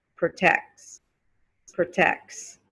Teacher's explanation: you don't hear the t anymore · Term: vanishing T